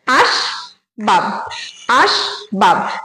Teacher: সুতরাং এটা কিন্তু রুদ্ধ দল আর এখানে বাব যখন বলছি তখনও ব এর সঙ্গে কোন স্বরধ্বনি উচ্চারণ হচ্ছে না তাহলে এখানে দুটো দল আছে দুটো দলই কিন্তু রুদ্ধ দল এটা